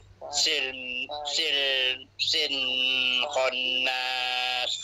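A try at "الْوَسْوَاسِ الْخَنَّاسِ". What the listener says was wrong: pak cik berhenti dulu dekat wa tu kena baca dua harakat.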